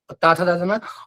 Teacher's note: ये आपके दंत वर्ण है, दंत से, दांत से बोले जाएंगे।